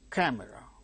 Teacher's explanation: Because it is k sound occurring at the word initial stressed position, it is aspirated like k, camera.